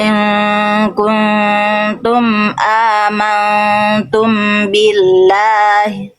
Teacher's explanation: Amantum bi jangan langsung amantum bi. Harusnya ditahan dulu juga dua harakat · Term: ikhfa syafawi